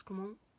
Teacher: The vowel before the N isn't nasalized, and the NT at the end are pronounced.